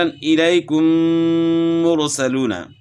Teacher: میم ساکن کے بعد میم آئے تو دونوں کو ملا کر غنہ کے ساتھ مشدد ادا کریں گے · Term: ادغام